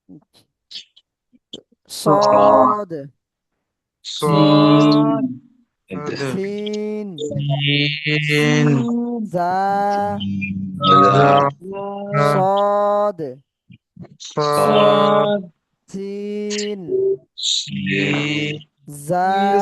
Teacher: সিটি আওয়াজ করে পড়তে হবে তিনটে হরফ